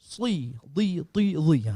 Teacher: Kalau yang tebal ni sad, da, ta, dha, bari bawah pun bunyi tebal. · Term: itbaq